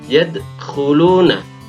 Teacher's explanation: Memantulnya dal yang mati di sini harus dibaca tidak terlalu keras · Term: qalqalah sughra